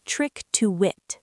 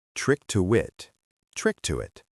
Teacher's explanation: The K sound at the end of trick pushes directly into the T of to. And the T connects to the it with a tiny little W sound hidden in the middle